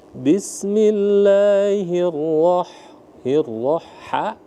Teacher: Ha tipis atau ha pedas, rongga tenggorokannya terbuka.